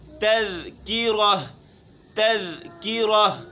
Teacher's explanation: ذال باریک ہے، کاف کے بعد جو راہ ہے وہ موٹی ہے، اس کے اوپر زبر ہے